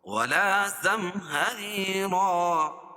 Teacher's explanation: زم میم ساکن کے بعد میم اور با کے علاوہ کوئی اور حرف آئے تو اظہار شفوی ہوگا. ری یا مدہ، یا ساکن سے پہلے را کے نیچے زیر ہے تو یا مدہ، اور را باریک بھی ہوگی. اور 2 زبر کی تنوین پر وقف کی صورت میں ایک زبر کے قائم مقام الف لکھی جو ہے اس کو پڑھیں گے اور دوسری زبر اپنی حالت پر باقی رہے گی، جیسے زم ہری رن سے ولا زم ہری را۔